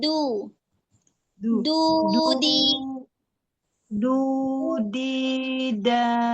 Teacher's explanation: Makhrajnya kan di ujung ya. Di ujung lidah menyentuh pangkal gigi seri atas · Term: harf dal